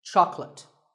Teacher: make sure that there are only two syllables Chuck and let chocolate and remember there is no late in chocolate speaking of